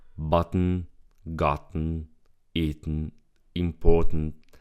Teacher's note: the throat stops the T in the middle of the word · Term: glottal T, The glottal T